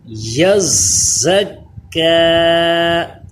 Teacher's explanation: زا پہ سیٹی پیدا ہو رہی ہے اور کاف باریک پڑھا جا رہا ہے، یا کو زا سے ملایا، زا کو کاف سے ملایا۔